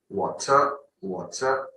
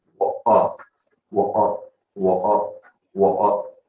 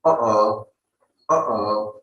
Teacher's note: So usually if we talk about British people, don't pronounce the T. You pronounce it like, it is stuck in throat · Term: glottal T